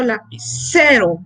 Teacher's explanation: Es el caso de la palabra lapicero. La fuerza la colocamos en la sílaba C. Ahí es donde colocamos la mayor fuerza al pronunciarla. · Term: acento